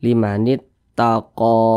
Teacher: ini namanya Mad thi'i panjangnya dua harakat atau kira-kira dua ketukan